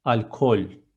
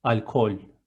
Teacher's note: The letter L in the end is so thin. It's not alcohol.